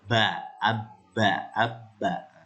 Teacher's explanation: ternyata dengan dua cara ini bisa kita ketahui bahwa huruf ba itu keluarnya dari dua bibir